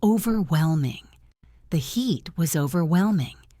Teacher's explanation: This means something is too intense to handle. The stress is on whelm.